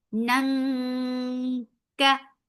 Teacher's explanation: you're hiding the sound of noon. You're going towards the makhraj of kaf. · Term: ikhfa